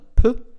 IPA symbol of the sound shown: p